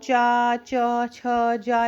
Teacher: ये चा वाली जो लाइन है और जो ई होती है वो तालव्य से बोली जाती है।